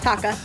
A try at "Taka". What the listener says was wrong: I think you said taco.